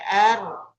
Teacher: getaran ringan pada ujung lidah ketika mengucapkan huruf ro disebabkan makhraj yang sempit. Jadi tadi karena punggung lidahnya naik ke gusi atau langit-langit depan, ya R, maka suara itu terhalang mau keluar. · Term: takrir